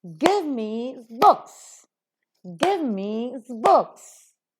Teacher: Give being a verb is accented, books being noun is accented.